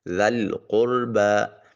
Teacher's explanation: ذال کی ادائیگی کے وقت سیٹی کی آواز نہیں آنی چاہیے اور اس کو نرمی سے ادا کریں گے